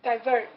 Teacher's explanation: So the emphasis on the second syllable.